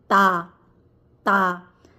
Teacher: जबान की नोक सामने वाले दोनों दांतों की जड़ से लगेगी। ठीक है? तब जो है वो ता दाल और त अदा होगा।